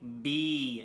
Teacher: You can hear the B is vibrating. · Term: voiced sounds